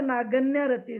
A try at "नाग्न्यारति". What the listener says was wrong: अच्छा अच्छा, हाँ नहीं नहीं, आप ठीक कह रहे हो, ग भी आधा ही है। हाँ, ग आधा, इसलिए नागन्या नहीं होगा, नागन्यारति होगा।